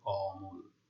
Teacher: মধ্য অ এর আগে অ, আ, এ, ও এই ৪টি ধ্বনির যে কোনোটি থাকলে সেই মধ্য অ এর উচ্চারণ সংবৃত বা ও এর মতো হয় · মধ্য অ এর উচ্চারণ এই যে ম এর সাথে যে অ রয়েছে তার উচ্চারণ ও এর মতো হচ্ছে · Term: সংবৃত উচ্চারণ, সংবৃত উচ্চারণের